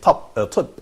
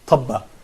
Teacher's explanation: I would say that ba doesn't have any vowel here